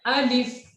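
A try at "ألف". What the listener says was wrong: लंबा नहीं करना है अलिफ को, हमने बताया सबको।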